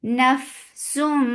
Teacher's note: Fa will get sifa of hums, and hums is flow of breath.